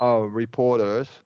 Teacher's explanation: gonna flap that T in reporters.